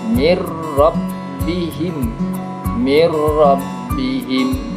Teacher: ada nun sukun lalu bertemu dengan rok-rok hurufnya idgham bilagunnah maka cara membacanya enggak boleh mendengung ditasydidkan